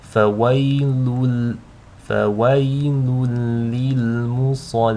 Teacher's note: The sad here is a heavy letter, so make sure you read that with tafkhim, with a full mouth.